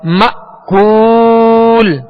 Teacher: مأکول، یہاں حمزہ ساکنہ ہے، اور ہم نے سبق نمبر 11 میں پڑھا تھا اس کی مشق میں حمزہ ساکنہ میں جھٹکا دینا ہے واضح